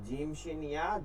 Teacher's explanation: জিহ্বার মধ্যখান তার বরাবর তালুর সঙ্গে লাগাইয়া